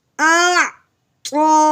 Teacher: اب ہم نے کھڑی زبر کو ایک الف کے برابر لمبا کرنا ہے